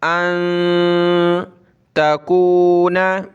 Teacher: नून नाक में आवाज़ पैदा करेंगे